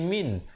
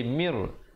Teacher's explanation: Asalnya mim baris bawah bertemu nun bunyi min, tapi bila datang ra jadi mir. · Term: idgham bila gunnah